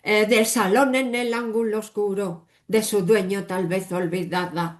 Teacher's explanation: every single syllable sounds with the same prominence. So they say we have a rattling rhythm.